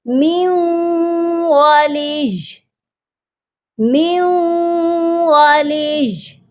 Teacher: یا پر ہم نے سختی سے رکنا ہے، سختی بھی کرنی ہے اور یا کو ہم نے ساکن بھی کرنا ہے. اس کو کھینچ کر پڑھنا درست نہیں ہے. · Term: یا مشدد